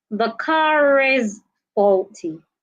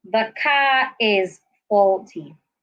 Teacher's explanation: Now, when I want to say this word, I need to link the R in car to the I in is